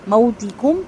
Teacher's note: میم واو زبر مو، یہاں پہ ہونٹ مکمل گول ہوں گے، واو لین ہے۔